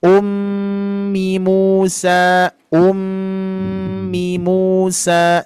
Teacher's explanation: Cuman mim bertasdidnya ditahan dulu, Bu.